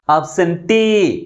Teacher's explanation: last syllable is pronounced with greater force comparing with other syllables. That is T. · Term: primary stress